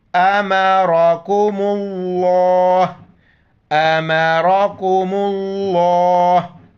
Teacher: پہلے جو حرف آ رہا ہے اس پر پیش ہو یا زبر ہو لفظ اللہ کو موٹا کر کے پڑھیں گے یہاں پر پیش آ رہا ہے تو لفظ اللہ کو موٹا